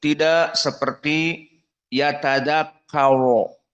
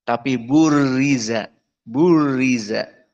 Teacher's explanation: Yauma yatadzakkarul insanu ma sa'i wa burizatil jahimu liman yare. Maka burizati di sini ra dalam keadaan kasroh. Maka di sini tidak ada tafkhim.